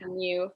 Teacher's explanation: So it's going to sound like it's got a Y sound after the end. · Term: liquid U